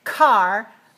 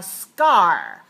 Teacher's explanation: not a car we don't have a puff of air so when the S or the sound comes before the stop sound it sucks up the air you don't need to let it out